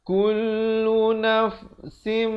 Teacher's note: idgham bi gunnah, tanwin bertemu mim masuk beserta dengung 2 harakat